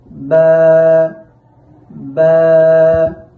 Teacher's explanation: বা হরফটি উচ্চারণের সময় দুই ঠোঁটের ভেজা অংশ থেকে উচ্চারণ করতে হবে খুব স্বাভাবিক থাকবে ঠোঁটগুলো ঠোঁটগুলো যেন খুব চাপ দিয়ে লাগানো যাবে